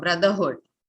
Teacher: the vowel sound there is definitely not A. It's the schwa